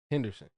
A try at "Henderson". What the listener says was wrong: You can say Henderson faster. You're purposely slowing it down. You're saying Henderson like you're at the spelling bee.